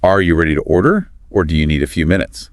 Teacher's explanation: notice that upward inflection on order and downward inflection on minutes